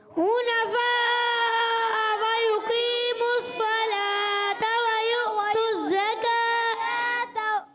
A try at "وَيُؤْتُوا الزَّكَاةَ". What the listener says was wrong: اچھا، وَيُؤْتُوا الزَّكَاةَ تا نہیں کریں گے، یہاں گول تا کو وف میں ہاں سے بدلتے ہیں، وف کریں گے تو وَيُؤْتُوا الزَّكَاةَ. میں نے بھی کیا کیا، وف میں یہاں پر گول تا کو ہاں سے بدلا.